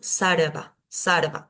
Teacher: en el interior de una palabra va a ser una r más suave